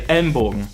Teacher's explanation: An N is mostly an M in front of a B or P, and the E there is more like a schwa, so it gets reduced and it's basically almost dropped.